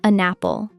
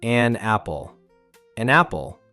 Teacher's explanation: It sounds like an apple. The N jumps over and joins the apple.